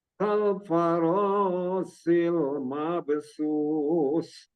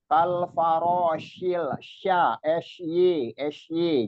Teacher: Jadi lebih dominan angin hamesnya itu namanya sifatnya tafashi. Banyak angin yang menyebar di permukaan lidah itu